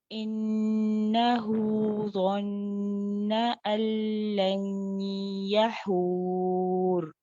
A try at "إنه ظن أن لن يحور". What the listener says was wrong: ظا کے مخرج کو ٹھیک کریں ظن